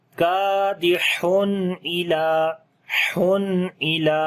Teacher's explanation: تنوین کے بعد حمزہ آ گیا ہے, تو اظہار کریں گے, نون کی آواز کو ظاہر کریں گے جو کہ تنوین کے اندر ہوتی ہے · لام کو لمبا کریں گے, کھڑی زبر ہے اس کے اوپر